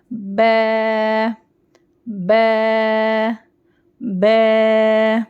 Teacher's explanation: اب اس کو بو نہیں کر دینا, بو نہیں, بے دونوں ہونٹوں کو پھیلائیں گے اور ملائیں گے